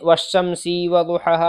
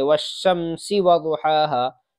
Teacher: جیسے والشمسی کے نیچے سین کے نیچے زیر ہے، تو اگر ہم اس کو والشمسی پڑھیں یعنی والشمسی وضحاہا تو یہ غلط ہو جائے گا۔ سین کو ذرا سا بھی نہیں کھینچیں گے